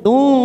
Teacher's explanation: ada dhamma tanwin pada huruf ta bertemu dengan huruf fa namanya ikhfa ausat